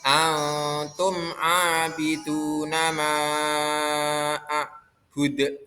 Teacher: Antum nun sukun ketemu tak, dibaca ikhfa hakiki.